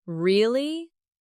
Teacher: Your voice goes up slightly at the end. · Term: Rising tone